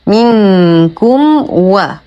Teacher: منكم و ميم ساكنة وبعدها حرف الواو في كلمتين. الحكم إظهار شفوي وأظهر ما تكون الميم عند الواو لاتحادهما بالمخرج